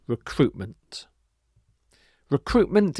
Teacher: often that t is dropped because it's just easier to say in normal everyday speech